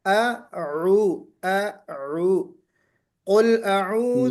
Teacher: اعوذ کہتے ہوئے آپ کوشش کیجئے کہ پہلے حمزہ نکلے پھر عین